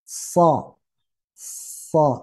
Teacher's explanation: Kok bisa jadi seperti O padahal bibir tidak monyong? Lagi-lagi karena pangkal lidah diangkat.